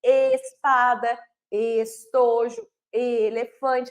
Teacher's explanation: na palavra espada estojo elefante Eu tenho um e mais fechado é diferente a minha boca do é ou do e igual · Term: e fechado